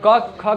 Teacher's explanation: क ख ग जो भी है वो सब कंठ से उच्चारण होता है